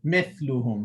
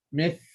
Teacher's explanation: When Tha is sakin, the tongue will remain on the edges of the upper teeth, and you just keep releasing air.